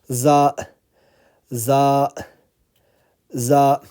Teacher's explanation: the tip of the tongue is touching the bottom of the front teeth.